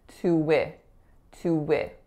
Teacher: the W from that tu is going to combine both of those syllables. So it's going to sound like tu-wi, tu-wi.